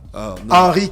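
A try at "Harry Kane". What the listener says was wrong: Pas Henri, c'est Harry.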